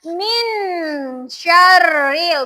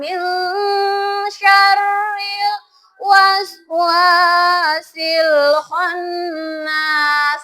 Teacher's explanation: Jadi membacanya bukan min syarril, bukan, tapi agak didengungkan min syarril waswasil khannas. Harus jelas juga ohnya itu. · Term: ikhfa samar